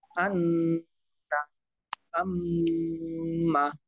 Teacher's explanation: 17 নম্বর মাখরাজ, নাকের বাঁশি হইতে গুন্না উচ্চারিত হয়, যেমন আন্না আম্মা।